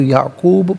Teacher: اسحاق و یعقوب، یہاں وقف پڑھیں گے تو یعقوب پڑھیں گے، باز ساکن ہوگا، حرف قلقلہ ہونے کی وجہ سے آواز لوٹتی بھی محسوس ہوگی